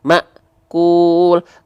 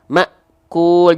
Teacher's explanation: Hamzah sukun ini sebagai pemutus antara Ma dengan ku